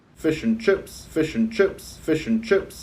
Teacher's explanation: The I sound there's they have that mouth raising that's going on in there where they lift New Zealanders will lift the middle of their tongue to make the I sound so it comes more like uh